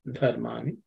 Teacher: Dha is the fourth letter in the dha varga, so it has to be aspirated.